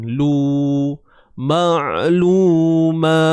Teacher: Dan lu ni kena muncung lah bibir sebab dia baris depan.